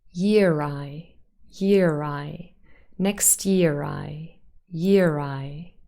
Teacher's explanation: There is a little r appearing. So the R from the spelling year is now pronounced with a r. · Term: linking r